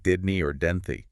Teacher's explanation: the H sound at the start of he is weak and often gets elided